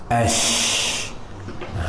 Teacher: Shin sifat tunggal dia ada tafasyi. Tafasyi ni berhemburan, keluar angin di antara lidah dengan langit.